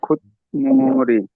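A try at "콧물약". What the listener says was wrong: হয়ে যাবে। ত মানে ত ধ্বনির পর এই নিচেটা শিয়র দশা মানে ত ধ্বনি না, ত ধ্বনির পর ম আসলে তটার উচ্চারণ নয়ের মতো হয়ে যায়, খুনমুড়ি হয়ে যাবে। খুনমুড়ি কয়েকবার পড়েন 8-10 বার হয়ে যাবে।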